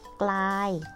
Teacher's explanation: มีพยัญชนะต้นสองตัวออกเสียงพร้อมกันคือกอไก่และลอลิง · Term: คำควบกล้ำ